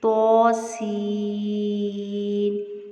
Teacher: توسین، ٹھیک ہے، تو ہو کے اوپر کھڑی زبر ہے، اس کو پر بھی پڑھیں گے اور سین میں سیٹی کی آواز کو واضح کریں گے اور اس کو بڑی ماد ہے تو اس کو لمبا کریں گے۔